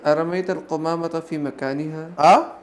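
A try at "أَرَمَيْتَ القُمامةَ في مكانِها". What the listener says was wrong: رمیت نے رمیت را کو پر پڑھیے. آپ لوگ تجوید پڑھتے ہیں تو اس میں را کو پر پڑھتے کہ نہیں آپ لوگ؟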